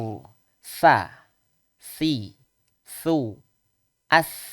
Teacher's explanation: Ujung lidah bertemu dengan ujung seri atas. Persis makhrajnya dengan huruf zal, huruf zu.